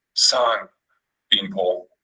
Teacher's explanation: the low tone has mid-falling pitch and breathy phonation,